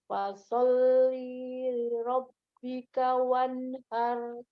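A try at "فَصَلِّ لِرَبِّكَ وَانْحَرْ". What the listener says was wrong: Nah, kan tadi dijelaskan bahwa sering kesalahan nih di sini li-nya dibaca panjang. Nah, bacanya panjang. Fasolli li rabb. Seharusnya pendek. Fasolli li. Ya, haknya Umi. Haknya dari tengah, alir nafasnya. Wan gitu ya. Wanhar.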